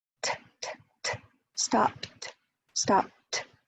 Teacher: So you go from a bilabial plosive to an alveolar dental, alveolar, t, t, t, stopped, stopped. Alveolar dental because it touches the alveolar ridge as well as the teeth, the back of the teeth. It's not too far back.